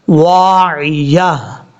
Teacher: یہاں پر وقف کرتے ہوئے تا کو ہا سے بدل دینا ہے